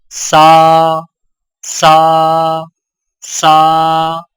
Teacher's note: सीन की आवाज बारीक और सीटी वाली होती है